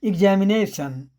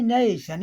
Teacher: अब जैसे यहाँ वही वर्ड है एग्जामिनेशन, तो एग्जामिनेशन में नेशन, नई के बगल में राइट हैंड साइड में वहाँ ऊपर लगा दिया गया है नेशन। इसका मतलब कि नेशन, और जो जितना पूरा शब्द में उच्चारण ध्वनियाँ हैं उन सबसे ज़्यादा यहाँ नेशन ज़्यादा बल लगा है